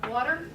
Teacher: in water, we have a clap in the middle. It sounds more like a D. Water. Doesn't sound so much like a T.